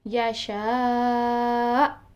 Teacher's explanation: حمزہ کو سکون عارضی کی صورت میں بھی ہم جھٹکا دے کر آواز بند کریں گے